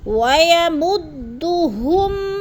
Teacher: وَيَمُدُّ یعنی کھینچنا نہیں ہے، تینوں کے اوپر پیش ہے تو حرکت کو کھینچتے نہیں ہیں۔ ہم پہ غنہ بھی نہیں کرنا، اظہار یعنی ظاہر کر کے لفظ کو پڑھنا ہے